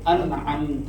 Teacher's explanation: ان ام کا نون ان ام ان لمبا نہیں کرنا اس کو. انعمت اظہار ہے یہ اظہار ہے, اس میں لمبا نہیں کرنا, غنہ نہیں کرنا.